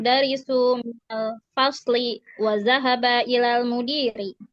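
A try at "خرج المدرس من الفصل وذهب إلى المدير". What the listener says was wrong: Oke, mumtaz.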